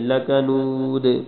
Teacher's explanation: لکنود آخر میں کلکلا کرنا ہے ، اور یہاں دال ہے، دال پہ دونوں پیشیں گر جائیں